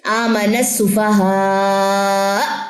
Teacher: اس میں حمزہ کی جو پیش ہے وہ ڈراپ ہو جائے گی, حمزہ پہ جزم آ جائے گا اور جھٹکا آئے گا. آمن السفہاء, ہا کوئی جھٹکے میں لے کر جانا ہے حمزہ کے ساتھ.